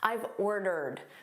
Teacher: This is a contraction of I have. So we say it as one word, I've. And it's a very unstressed pronunciation.